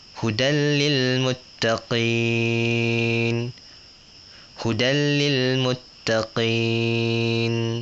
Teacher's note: Dia pendek, idgham bila gunnah, 1 harakat.